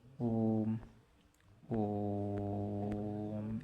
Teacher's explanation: दीर्घ स्वर से भी अधिक समय लगता है या दीर्घ स्वर से तिगुना समय लगता है। 3 मात्रा का समय लगता है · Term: प्लुत स्वर